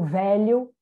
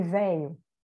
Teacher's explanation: a lateral palatal ter ou não despalatalização, do tipo velho e véio.